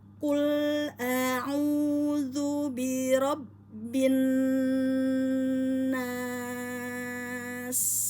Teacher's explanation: Pastikan hak mustahak pada sin sofir, maka kita keluarkan hamasnya dan sofirnya ya, bunyi burung ya.